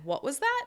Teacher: Raising from low to high to show the person that you need them to repeat themselves. · you’re going to start low and show that questioning intonation at the end